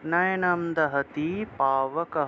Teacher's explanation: বিসর্গ থাকায় হ উচ্চারণ।